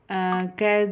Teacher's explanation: क जो वर्ण है यह अपना अघोष है और अल्पप्राण है